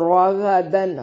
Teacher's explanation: وزوجکل جنتا، زو واو لین ہے، جنتا نون میں شدت پہ غنہ ضروری ہے، وکلا لا الف مدہ ہے، منہا ہا الف مدہ ہے، اور راغدن را کو موٹا اور غین کو بھی موٹا ادا کریں گے